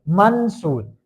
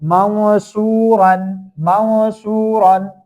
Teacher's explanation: we have to do like we'll hide the sound partially in nose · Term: Ikhfa